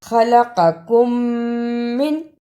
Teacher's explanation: میم ساکن کی آواز کو تھوڑی دیر ناک میں چھپا کر غنہ کرنا ہے۔ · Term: ادغام شفوی